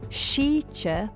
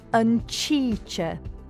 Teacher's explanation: Slender S, sh, as in sheche, weather, hardens to ch and becomes uncheche, the weather.